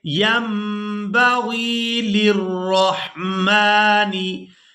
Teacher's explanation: नून साकिन को मीम के साथ बदल कर अदा करेंगे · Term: इक़्लाब